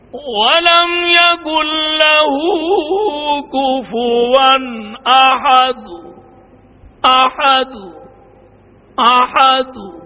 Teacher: خفی آواز میں موقوف علیہ کی حرکت کو پڑھیں گے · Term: روم